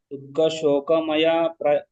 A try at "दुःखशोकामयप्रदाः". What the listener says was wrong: ದುಃಖಶೋಕ ಅಲ್ಲಿ ದುಃಖಶೋಕ ಅಂತ ಎಳಿಬೇಕಲ್ಲಿ ಆಮಯ ಅಂತ ಆಗ್ತದೆ. ದುಃಖಶೋಕಾಮಯ ಪ್ರದಾಹ ದುಃಖಶೋಕ ಅಲ್ಲ ದುಃಖಶೋಕ